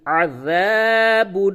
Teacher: ع، ذال الف زبر ذا، عذا، با دو پیش بن، عذاب، ع حلق سے عین نکالیے